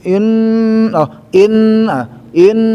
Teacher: untuk gunah tiga harakat itu sudah masuk ke rongga hidung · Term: dengung